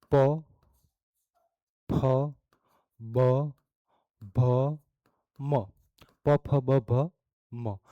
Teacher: આ જ્યારે આપણે બોલીએ ત્યારે આપણા હોઠ એ ભેગા થાય પ ફ બ ભ મ અને પવર્ગની લાઈન અથવા તો ઓષ્ઠીય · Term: ઓષ્ઠીય વ્યંજન